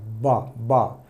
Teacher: B is bilabial sound. It means you have to use two lips, upper lip and lower lip. B, upper lip and lower lip. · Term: B sound